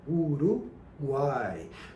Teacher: e uma outra semivogal tá na palavra Uruguai por exemplo Uruguai a gente tem o u o a e o i na última sílaba Uruguai tudo pronunciado na mesma emissão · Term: tritongo